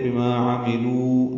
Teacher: عملو یہ واو مدہ ہے، 2 حرکات لمبا کریں گے